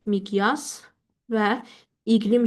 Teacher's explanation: Tələffüz zamanı bu zaman özündən sonra cingli samit gəldiyinə görə q olduğu kimi qalır.